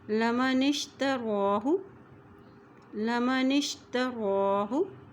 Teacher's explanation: रा के ऊपर खड़ी ज़बर है तो इसको एक हरकत लंबा पढ़ेंगे